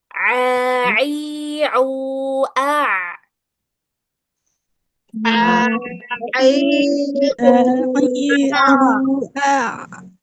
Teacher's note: untuk huruf ain ini enggak keluar angin ya. Dia bukan huruf hamas, bukan huruf-huruf yang keluar angin. Jadi dia enggak boleh keluar angin.